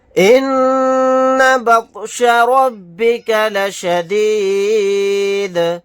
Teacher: طوا ساکن ہے تو یہاں پر بھی قلقلہ کریں گے